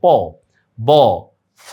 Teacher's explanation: প উচ্চারণের সময় ভাষাবিদরা দেখছে যে নিচের ঠোঁটের জোরটা বেশি থাকে।